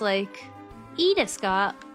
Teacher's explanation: You have to say it i is, up, and then des is going down, and then ka is going up